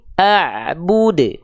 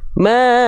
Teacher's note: Qalqalahnya kuat ya, namanya qalqalah kubro.